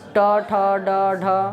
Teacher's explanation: तालु के ऊपरी भाग को। तो जिनका उच्चारण मूर्धा यानी तालु के ऊपरी भाग से हो मूर्धन्य वर्ण है